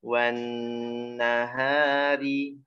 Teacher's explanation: nahari hanya sampai tengah, sampai pangkal tenggorokan aja, jangan sampai ke dada. Jangan wan nahari ha, terlalu berlebihan.